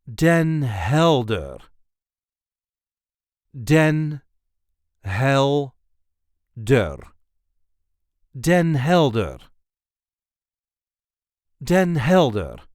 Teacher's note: There is a light emphasis on the first syllable of the second word.